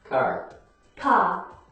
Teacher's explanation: standard American English clearly pronounces the r after a vowel sound where most British English speakers don't